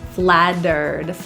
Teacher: The T in flattered is a flap T, pronounced as a quick D.